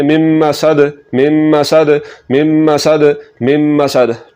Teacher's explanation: اور یہ جو دال ہے اس پر قلقلہ ہوگا وقف کی صورت میں